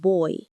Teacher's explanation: your tongue actually starts in one position and moves to another. All within a single syllable. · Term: gliding vowels